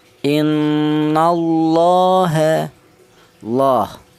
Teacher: Nah ini ya, lafal Allah dia didahului huruf yang berharokat fathah, maka cara bacanya ini dibaca tebal, gara-gara lafal Allah jatuh setelah harokat fathah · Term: tafkhim